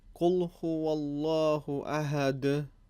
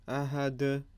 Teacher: Here is again a prime example of dal with qalqala. And we see the vibration at the end.